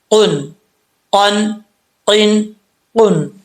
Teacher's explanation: جو تالو کا نرم حصہ ہے اس سے زبان کی جڑ لگے گی تو یہ دو نقطوں والا قاف پڑھا جائے گا · دو نقطہ والا قاف ہے، یہ فل موت پڑھا جائے گا